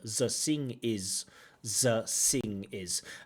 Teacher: many people who speak Slavic languages and many people in Central Asia uh they often replace their the with a z and a s